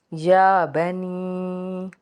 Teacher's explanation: या के ऊपर खड़ा ज़बर है, एक अलिफ के बराबर इसको खींच के अदा करेंगे